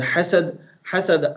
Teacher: ha of hasad will come out huruf halaqi from halaq, middle portion of your halaq, and then dal we are going to remove fatha from this dal because we are going to make sukun, and when we have sukun on dal always we will make qalqala.